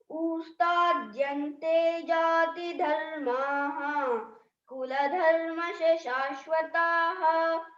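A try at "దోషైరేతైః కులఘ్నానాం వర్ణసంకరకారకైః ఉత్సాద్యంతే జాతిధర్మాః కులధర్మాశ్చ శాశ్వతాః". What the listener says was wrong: రెండవ లైన్ ఉత్సా కాదు, ఉత్సాద్యంతే జాతి ధర్మాః కులధర్మాశ్చ శాశ్వతాః. ఉత్సా తాకు సావత్తు, సాకు తావత్తు కాదు, తాకు సావత్తు. ఉత్సాద్యంతే జాతి ధర్మాః కులధర్మాశ్చ శాశ్వతాః. కుల ధర్మశ కాదు, కుల ధర్మాశ్చ శాశ్వతాః. కుల ధర్మాశ్చ, కుల ధర్మాశ్చ చెప్పు ఒకసారి.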